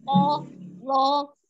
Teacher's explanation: dibacanya harus dengan mengangkat pangkal lidah ya, tebal ya.